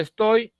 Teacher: cuando primero inicia la vocal abierta y luego pasa a la vocal cerrada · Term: diptongo descendente